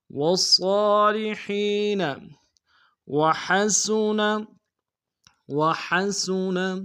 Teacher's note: سین کی سیٹی باریک ہوگی